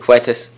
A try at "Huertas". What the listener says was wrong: Huertas. Yeah, don't put as much phlegm in your throat as you are. Whisper the Huertas. Beginning. Huertas.